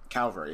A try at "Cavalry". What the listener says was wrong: Cavalry, not Calvary. Cavalry. Not Calvary. Cavalry. C-A-V-A-L-R-Y, not C-A-L-V-A-L-R-Y, or whatever the fuck you're pronouncing it as.